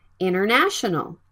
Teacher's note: is the NT sound between vowels when the NT sound is between vowels the T sound can be dropped